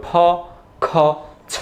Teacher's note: বাতাস বের হইতে হবে, কেমন জোরে সাউন্ড হইতে হবে